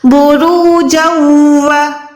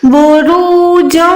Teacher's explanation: یہاں پر ہم نے گننا بھی کرنا ہے، آواز کو ناک میں لے جانا ہے۔